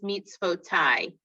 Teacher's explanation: If there's a yud following one of the vowels, the vowel blends into the yud and it becomes I. So that one's mitzvotai.